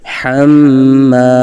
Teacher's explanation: حا کی آواز حلق کے درمیان سے ادا کریں گے،